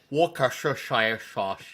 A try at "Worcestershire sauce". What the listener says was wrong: See, your mistake is you're not supposed to pronounce the R. Worcester. It's like Worcester. Worcestershire sauce.